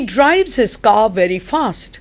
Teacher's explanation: when you say car, you don't pronounce the R.